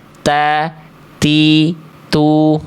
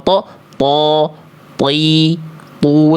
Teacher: Jadi ketika melafalkan ta, dia itu ada percikan nafasnya. · Dia enggak ada percikan nafasnya. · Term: Hams, huruf tho